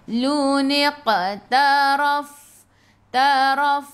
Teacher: Qaf hurufnya qalqalah, lantunannya kecil.